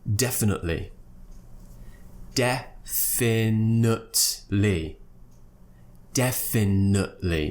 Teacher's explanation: I'm not producing the T after the schwa sound